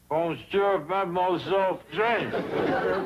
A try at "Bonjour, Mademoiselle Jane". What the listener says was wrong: That's very good. Except for the moi. Must be soft. Moi.